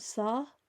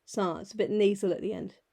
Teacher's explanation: It's a bit nasal at the end.